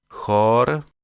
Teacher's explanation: est un son très doux qui s'articule entre la vélaire de la jota espagnole et la palatale du licht allemand